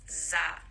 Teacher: there is none of the tongue being involved when you say zah you're just using your teeth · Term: z sound